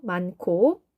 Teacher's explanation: 히읗과 기역이 만나면서 축약되어서 키읔이 되었죠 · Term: 거센 소리